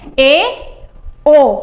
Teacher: सकरा की अपेक्षा थोड़ा सा मुंह खुल गया तो अर्धसमृत।